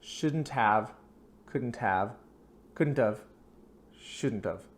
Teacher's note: So the H is almost silent. It's almost like gv. We just go to the v sound.